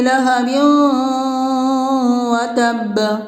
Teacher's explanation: 2 زیر کی تنوین کا واو میں ادغام مع الغنہ ہوگا، یعنی اس کو غنہ کے ساتھ ملا کر پڑھیں گے